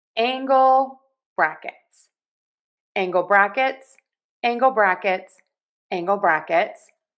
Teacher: angle is getting more of the stress here with angle brackets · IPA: /ˈæŋ.ɡəl ˌbræk.ɪts/